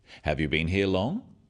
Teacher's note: Questions that start with have you are yes-no questions, so they have a rising tone.